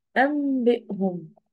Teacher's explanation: الإقلاب هي عبارة عن إن أنا أقول النون أخليها ميم